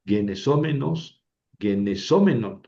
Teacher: Ojo porque en el menos, mene, menon, en la terminación, el masculino y el neutro llevan el acento en la antepenúltima